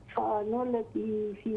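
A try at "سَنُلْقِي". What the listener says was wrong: سا لمبا نہ کریں سین کو، سنلقی، سنلقی،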